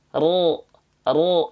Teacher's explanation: maka bunyi vokal a-nya otomatis akan menjadi O tanpa harus membulatkan bibir tanpa harus menggerakkan bibir tanpa harus memonyongkan bibir paham ya enggak perlu monyongin bibir Ya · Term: istilahnya diaktifkan